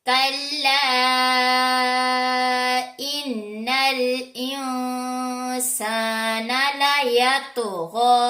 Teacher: را حروف مصالحہ میں سے نہیں ہے، لیکن را کے اوپر زبر آ جانے کی وجہ سے را موٹا ہوگا، موٹا پڑ جائے گا۔ غین ہمارے حروف مصالحہ میں سے ہے، اس لیے موٹا پڑا جائے گا، اور نون کے اوپر کھڑا زبر ہے تو اس کو کھینچ کر پڑھیں گے۔